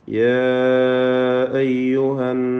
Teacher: നൂൻ മുഷദ്ദദ 2 ഹറക്കത്തിൻ്റെ അളവിൽ മണിക്കേണ്ടതാണ്